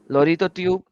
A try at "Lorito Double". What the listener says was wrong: It's not tube. There's an L there.